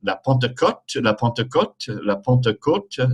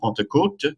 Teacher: So there's an O there, rounded O